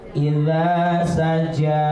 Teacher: Saja itu baru jim. Kalau ja punggung lidah kita nempel ke langit-langit.